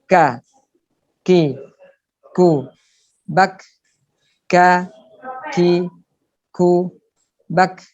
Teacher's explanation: Jadi pangkal lidah menyentuh langit-langit mulut lebih ke depan lagi dari qaf. Kalau qaf tadi murni di langit-langit mulut yang berupa daging di situ yang empuk, sedangkan kaf ini sudah bisa dapat dua-duanya, antara yang daging dan yang keras di depan itu nempel di situ.